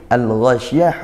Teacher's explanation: Al-Ghasyiyah hukumnya izhar qamariyah, dibaca izhar ya, dibaca jelas ya, karena al bertemu huruf ghain, huruf qamariyah.